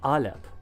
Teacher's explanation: The Phoenician word for ox was alip which started with a sound called a glottal stop